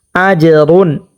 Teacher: এখানে জিমটাকে কলকলা করিয়ে পড়তে হবে এবং রুন গণ্য করা যাবে না।